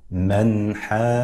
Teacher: أن ينطق القارئ بالنون الساكنة من مخرجها الذي هو طرف اللسان مع ما يحاذيه من الحنك الأعلى، من غير زيادة ولا من غير زيادة في الغنة ولا تمطيط ولا تشديد كما يقول علماء التجويد. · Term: الإظهار